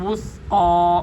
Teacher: تھا یہاں پر سیٹی کی بالکل آواز نہیں آنی چاہیے. تھا کو ادا کرنے کے لیے اوپر والے دانتوں کے ساتھ اپنی زبان کو لگائیں گے تو ثا ادا ہوگی